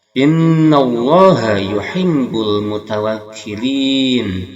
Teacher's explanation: Huruf ini asalnya hidup jadi mati, dia matinya sukunnya arid atau baru, jadi arid ini lisukun. Maka mad bertemu arid lisukun dinamakan di sini apa? Mad arid lisukun. Panjangnya 2 sampai 6 harakat.